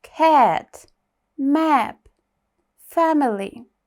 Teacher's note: широкий звук е. Тобто широко треба відкрити рота і сказати е.